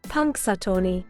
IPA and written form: ˌpʌŋksəˈtɔːni (Punxsutawney)